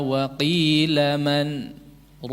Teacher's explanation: Saktah dijeda berhenti tanpa mengambil nafas. Berhenti sejenak tanpa mengambil nafas.